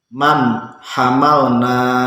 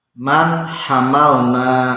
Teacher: Nun mati bertemu dengan ha, maka membaca nun ini harus jelas. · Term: izhar